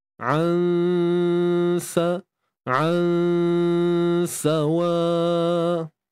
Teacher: Untuk ikhfa hakiki ni tadi, dengung dia nipis saja, ya.